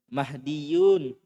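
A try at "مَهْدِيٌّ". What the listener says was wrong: Baca Dursul Lugu jilid 3 panjang pendeknya salah-salah.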